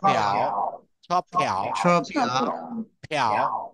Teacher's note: এখানে বাতাস বের হবে, পির সাথে বাতাস বের হবে।